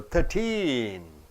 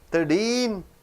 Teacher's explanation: When you say the age, when you say the number, you have to stress the last syllable